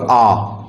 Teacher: जब बड़ा आ बोलते हैं तो बड़ा सा मुख खोलते हैं